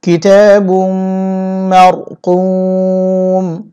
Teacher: অক্ষের সময় মিম সাকিন হবে এবং এখানে 3 আলিফ লম্বা করে পড়তে হবে।